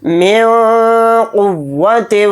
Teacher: ایک حرف ہے تو اس میں اخفا کر کے پڑھیں گے، یعنی نون کی آواز کو ناک میں چھپا کر پڑھیں گے